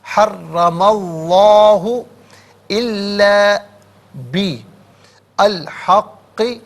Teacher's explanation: اس میں اللہ کی حرف لام سے پہلے والے حرف پر زبر یا پیش ہو تو پر پڑھتے ہیں، زیر ہو تو باریک کر کے پڑھا جاتا ہے، یہاں پر اس میں اللہ کی حرف لام کو پر کر کے پڑھیں گے کہ ما قبل میم پر زبر ہے